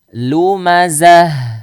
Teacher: yang keluarnya dari tenggorokan bawah ya tenggorokan bawah bukan yang dari tenggorokan Tengah